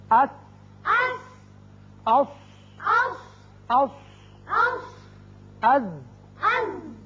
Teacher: زبان کا اگلا سرا اور سامنے والے چاروں دانتوں کے تھوڑا سا آپس میں ملنے سے یہ حروف ادا ہوتے ہیں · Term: سیٹی والے حروف